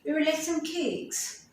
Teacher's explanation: So your main stress is, your intonation is, your rising and falling tone of your voice is telling the main information about this word, that is cake.